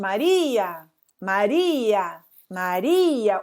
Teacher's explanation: O I sai mais forte que o A. Se o I sai mais forte que o A e ele é fraco, ele precisa dessa ajuda. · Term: hiato